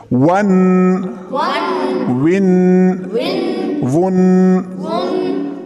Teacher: ون جو ہے اخفا کرنا، ناک میں آواز چھپانا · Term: تنوین اخفا